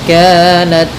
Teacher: Kemudian kanat, nah, dalam ta sedikit dikasih hamas karena sifat ta ketika sukun itu tampak hamasnya.